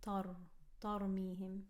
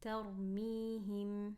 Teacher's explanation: Light ta, heavy ra.